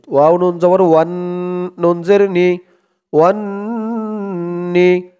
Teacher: এখানে ওয়াজিব গুন্নাহ হরকতের পরে নুনের উপরে তাসদিদ